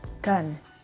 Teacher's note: The G sound is called voiced velar stop from the word gun.